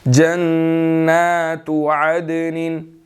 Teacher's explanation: یہاں پر نون مشدد ہے اور کھڑی زبر ہے، اس پر غنہ بھی ہوگا، اس کو ہم نے تھوڑا لمبا بھی کرنا ہے۔